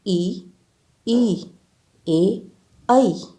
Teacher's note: इन स्वर ध्वनियों के उच्चारण में जिह्वा मुंह में आगे की ओर जाती है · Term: अग्र स्वर